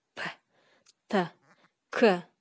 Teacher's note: Каткалаң үнсүздөрдө үнгө караганда шыбыш басымдуулук кылат. П, Т, К. Мында шыбыш үнгө караганда көбүрөөк басымдуулук кылып атат.